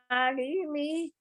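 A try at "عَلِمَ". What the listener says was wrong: Tidak terlalu kepanjangan.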